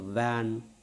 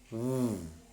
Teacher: The lower lip is coming very close to the upper teeth and the air is pushed out, but the vocal cords are vibrating. So that's why it is labiodental voiced fricative.